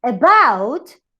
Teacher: And in the example of about is the last syllable. So you call it stress in last syllable.